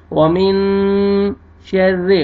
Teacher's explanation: را مشدد لیکن کسرہ زیر ہے، آپ نے را کو باریک کرنا ہے